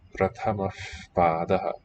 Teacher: So your lips are going to the P position. They just linger a second with openness to allow air through. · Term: voiceless bilabial fricative